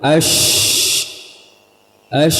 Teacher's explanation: syin bisa as bisa kita panjangkan maka kita bisa pahami bahwa huruf syin dia makhrjnya tidak rapat dan dia memiliki sifat tafasyi yaitu apa intisyarusut intisyarul Hawa menyebarnya udara di mulut as as